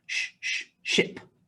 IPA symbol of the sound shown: ʃ